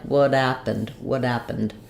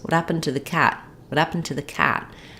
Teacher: Instead of using an unreleased T, what happened, because I have a consonant sound, I'm moving from the T to a vowel sound, so I'm going to use a flap T instead